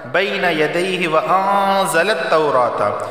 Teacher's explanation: انزل التوراۃ والانجیل، یہاں نون ساکن کے بعد جیم آیا ہے اور جیم حروف اخفا میں سے ہے تو اخفا والا غنہ ہوگا، یعنی زبان کے نوک اوپر کے تالو سے نہیں لگے گی۔